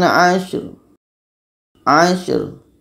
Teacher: Shimnya terdengar berangin dan ro pun terdengar.